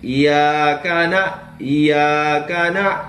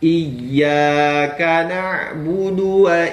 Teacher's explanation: kita itu tidak memberikan tasdidnya pada tempatnya langsung iyakana iyakana tapi harus dimasukkan dulu ditasdidkan barulah diucapkan huruf ya-nya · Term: bertasdid